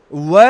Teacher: व जो एक व्यंजन है इसका दांत और ओष्ठ दोनों से उच्चारण होता है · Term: दंतोष्ठ